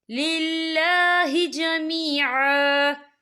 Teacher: اللہ کا نام باریک پڑھا جائے گا کیونکہ اللہ کے نام سے پہلے زیر ہے